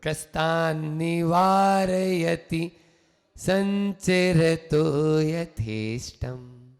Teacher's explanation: संपूर्ण मंडल शशांक कला कलाप, शुभ्रा गुणास्त्रिभुवनम तव लंघयन्ति, ये संश्रितास्त्रिजगदीश्वर नाथमेकम्, कस्तान्निवारयति संचरतो यथेष्टम्। इसमें दो न है, एक आधा न है, उस पर पूरा जोर न दें, और निवार्यति में आप पूरा न बोल के आगे बढ़े, रस्व इकार को लेते हुए, है ना।